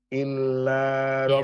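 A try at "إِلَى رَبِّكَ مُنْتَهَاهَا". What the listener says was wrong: Ila. Bukan illa, tapi ila.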